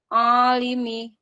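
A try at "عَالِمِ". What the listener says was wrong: Jangan A, jangan dari hidung. Jangan A, alimi. Ini masih hidung. A, dari mulut. Masih sini ya. Nah, ainnya nyangkutin.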